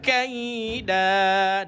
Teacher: kaf baris atas jumpa ya sukun dibaca dengan bunyi apa tuan-tuan? Bunyi lin. Lunak ataupun lembut.